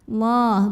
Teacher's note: secara tafkhim Kenapa karena huruf sebelumnya yang Dal berbaris lemah maka cara membacanya ditebalkan pangkal diangkat